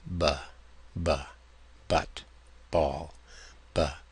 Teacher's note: we make the same sound bilabial, and stop the sound, but voice it this time